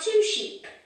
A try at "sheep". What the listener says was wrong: There are 2 sheep, not ships. Because there are, those were boats, yes, but sheep. Sheep, yes. Es con la I larga, sheep, yes, the pronunciation sheep.